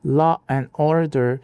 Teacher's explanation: eles enfiam um r onde ele sequer existe na escrita isso acontece porque o cérebro deles se acostumou tanto a usar o r como ponte que ele começa a fabricar rs artificiais para facilitar o fluxo.